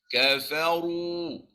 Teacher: Kafaru salah. Kena baca kafaru. Tebal. Naik pangkal lidah.